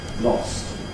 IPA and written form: lɒst (lost)